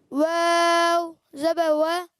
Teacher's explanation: واو زبر وا, ہونٹوں کی گولائی سے